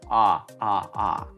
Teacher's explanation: он всё-таки больше похож на а нежели на о